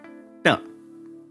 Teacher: the first retroflex is unvoiced and unaspirated